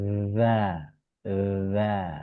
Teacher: Padahal sebetulnya kalau kita menempatkan gigi atas sebagai pertemuan dengan ujung lidah, maka za.